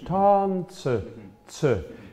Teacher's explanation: is that the is what we call the schwa. It's sort of a neutral vowel at the end of German words.